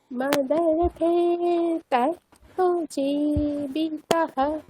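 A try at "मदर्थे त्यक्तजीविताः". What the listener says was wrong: আচ্ছা, তা দীর্ঘ, তাহলে দীর্ঘটা বলতে হবে, টানতে হবে একটু। মদর্থে ত্যক্তজীবিতাঃ।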